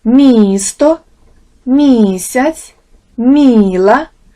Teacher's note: в позиції перед голосним і звук м дещо пом'якшується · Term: звук мі